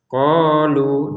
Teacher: kita panjang dua harakat saja karena tidak gabung dengan hamzah. Kalau digabungkan baru lima harakat.